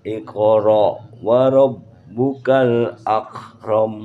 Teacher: Kalau kaf bukan mantul, tapi ak.